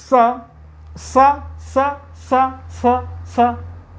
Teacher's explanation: दांतों में लग रही है, नीचे वाले दांतों के ऊपर